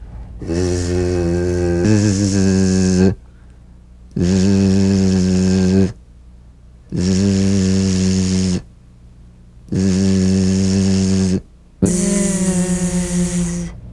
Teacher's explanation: So feel a smooth, strong vibration in the teeth and in the front of the tongue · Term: Z sound